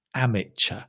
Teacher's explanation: Amateur is written with a T, but it's a ch sound.